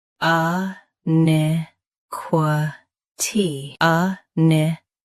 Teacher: Both US and UK have the same pronunciation of this word. Stress ni. Keep qua soft, then ti clear.